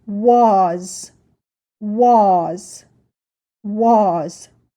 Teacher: You can hear that the sound for the A is a little different and the sound for the S is also different. The S again sounds like a Z.